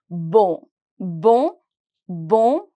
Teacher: Remember, my on sound is a bit of nasal sound.